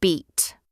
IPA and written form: biːt (beat)